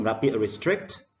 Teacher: For the word restrict, we stress on the second syllable.